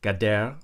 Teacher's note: has a long a quality vowel in the first syllable